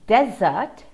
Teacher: pronunciation difference here and it's simply a matter of syllable stress in desert the stressed syllable is the first syllable